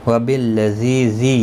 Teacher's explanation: یا مدہ ہے، ایک الف کی مقدار کے برابر کھینچ کر پڑھیں گے